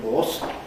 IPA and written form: hɔːs (horse)